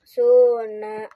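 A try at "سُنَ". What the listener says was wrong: Nanya pendek ya, jangan suna, jangan tapi suna.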